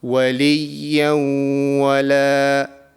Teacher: So when we are doing idgham naqis, we have to conceal the sound of noon sakin into our nose for 2 seconds, and that is the nasal sound.